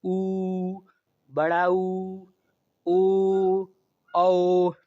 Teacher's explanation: तो इनके जब उच्चारण हम करते हैं तो यह जो हमारे होठ है वो लगभग गोल हो जाते हैं, इसलिए इन्हें वृत्ताकार या वृत्तमुखी स्वर कहते हैं।